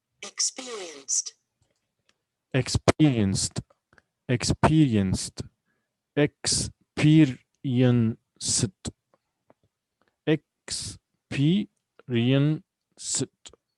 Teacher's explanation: So we have four syllables here, and the stress is on the second syllable. So underline peer.